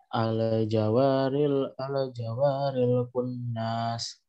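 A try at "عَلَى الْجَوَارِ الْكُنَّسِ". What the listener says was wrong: Enggak ada mat di sini, nak. Enggak ada yang diayun. Ulang.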